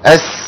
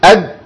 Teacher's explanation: حرف السين حرف بيجري فيه الصوت يعني ايه بيجري فيه الصوت يعني حرف بيسموه العلماء حرف رخو